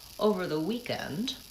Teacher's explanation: I've used a pretty consistent pattern for pitch. So in this instance, I marked the pitch by rising up. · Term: thought groups